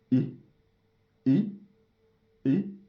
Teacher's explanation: Ce son se trouve entre I et E. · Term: short vowel